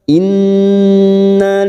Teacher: Nun yang bertasdid gunna musaddadah kita tekan kita dengungkan selama tiga harakat